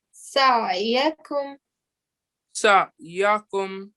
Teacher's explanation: So when you saying it, you need to give sort of a slight jerk sound and make sure you say it from the middle of your throat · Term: letters of throat